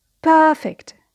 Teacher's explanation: So perfect is an adjective, so the stress is on the first syllable